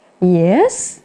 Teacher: fall rise, tức là xuống rồi lên